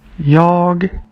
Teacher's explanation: At the end of the Swedish one, you can hear a hard G sound.